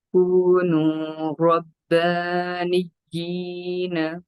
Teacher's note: نون کو یا سے جب ملائیں گے تو نبر کریں, یعنی جلدی سے کنیکٹ کریں